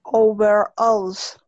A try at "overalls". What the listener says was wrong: Alls. La O al final tiene que sonar hueca. All. All. All. Alls. Y la primera O tiene que sonar cerrada. O. O.